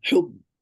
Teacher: apply shidda in jahr, trapping that sound, trapping that breath, trapping that air